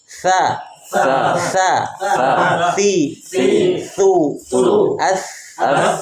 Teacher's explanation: Ujung lidah kita tempel di ujung gigi seri. Berarti keluar sedikit.